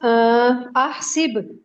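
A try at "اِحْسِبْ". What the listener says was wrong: हमजा पे क्या आप डाल रहे हो? बिल्कुल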